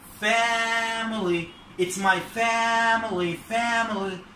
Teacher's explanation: الستريس على أول مقطع first syllable